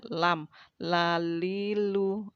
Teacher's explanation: Lalu selanjutnya adalah huruf bagian ujung lidah ya. Ujung lidah mengenai langit-langit atas mulut kita